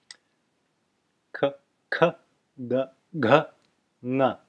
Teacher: These sounds are, as you can see written on your document, your sheet in front of you, they are arising from the throat. So all of these sounds are made from the throat and from the throat alone. They do not involve any use of the tongue or the teeth or the lips or any other part of the mouth, if there is any other part. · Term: gutturals